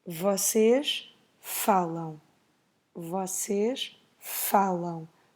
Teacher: the stress is on the first syllable. And then we make a nasal sound at the end.